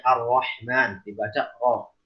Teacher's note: ro tafkhim ketika berharokat fathah